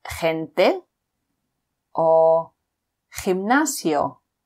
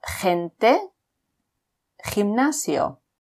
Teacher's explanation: when the G is before an E or an I, again, it's pronounced like H in loch